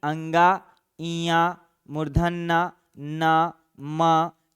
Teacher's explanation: यह आप कंठ से तो बोल रहे हैं लेकिन यहां पर सर्वाधिक बल नाक पर पड़ रहा है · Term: पांचवा अक्षर